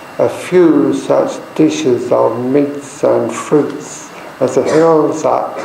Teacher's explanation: an iambic meter we stress on the second of two syllables